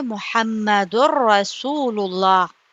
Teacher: تو یہاں پر دال کو، دال دو پیش کو را میں ملائیں گے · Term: بلا غنہ